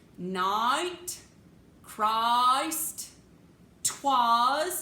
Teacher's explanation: So you've got the ah vowel for night, Christ, 'twas, and born.